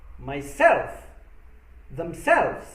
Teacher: with the reflexive pronouns the second syllable usually takes the stress